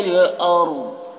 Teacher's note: یہاں پر را کو پر پڑھیں گے، ضاد کو بھی پر پڑھیں گے